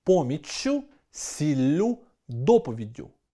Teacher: У формі орудного відмінка (ким? чим?) в усіх запропонованих словах фіксуємо подовження приголосних (поміччю, сіллю, доповіддю)